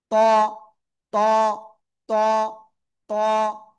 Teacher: অনেকে বলে তুয়া, তুয়া না, জাস্ট জিব্বার আগা উপরে দুই দাঁতের গোড়ায় লাগান, লাগান লাগান, লাগিয়ে উচ্চারণ করতে হবে